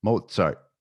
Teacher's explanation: saying Mozart with a t sound for the Z